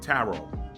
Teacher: the final t is actually silent